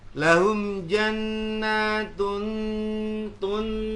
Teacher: Jadi bukan tung ya, tapi tun ya. Kayak mau mengucapkan huruf ta berikutnya. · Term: ikhfa yang adna